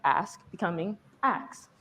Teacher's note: the SK sound becomes a KS sound in words like ask becoming ax.